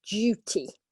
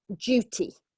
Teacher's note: this DU in English often pronounced with a J sound